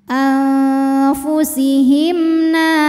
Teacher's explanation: mim sukun dibaca dengan jelas bunyi m dan tidak ditahan anfusihimna n Mad thi'i muqaddar karena huruf nun di berharakat fathah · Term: izhar syafawi